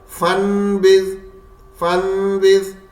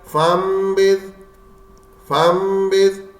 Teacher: بعض لوگ اقلاب کرتے وقت نون کی ملاوٹ کرتے ہیں. یہاں صرف میم کی آواز آنی چاہیے، نون بالکل نہیں آنی چاہیے